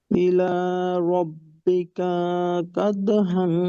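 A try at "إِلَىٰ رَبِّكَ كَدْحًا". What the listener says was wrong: রব্বিকায় মাদ হয়ে যাচ্ছে ভাই, জবরের উপর আলিফ নাই তো।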